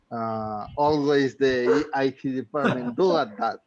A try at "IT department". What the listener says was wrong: And the pronunciation is IT, not AT. It's department. IT department.